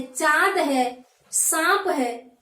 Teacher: अनुनासिक चंद्रबिंदी है जो मुख और नाक से ध्वनि निकलकर प्रयोग की जाती है।